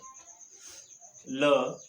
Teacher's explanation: जिन ध्वनियों के उच्चारण में जिह्वा नोक जो है वह मसूड़े से स्पर्श करती है और निकलने वाली हवा जिह्वा के दोनों पार्श्व से बाहर जाती है, तब पार्श्व ध्वनियों का उच्चारण होता है। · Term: पार्श्विक ध्वनि